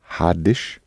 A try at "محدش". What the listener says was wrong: that's exactly it.